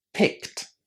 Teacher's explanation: examples of ed endings pronounced as t, a single t sound that we attach to the infinitive.